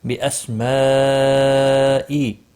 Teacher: بڑی مد ہے، متصل، مد متصل، چار الف کے برابر کھینچ کر پڑھیں گے